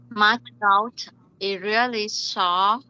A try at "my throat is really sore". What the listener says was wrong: is. Please don't forget to pronounce the letter S. Again, my throat is really sore. Again, is really sore.